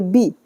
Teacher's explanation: با کو جلدی سے پڑھیں گے بی، اور موٹا پڑھیں گے